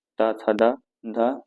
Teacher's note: त थ द ये किससे हो जाएंगे? दंत से हो जाएंगे।